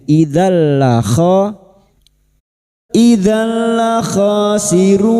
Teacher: Masuk pada huruf lam tanpa mendengung. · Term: idgham bila gunah